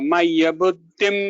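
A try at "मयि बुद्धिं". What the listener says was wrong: Few changes. Mayyeva mana adhatsva mayi buddhim. I heard it as maya. I'm not sure if it was the audio issue, but it's mayi buddhim.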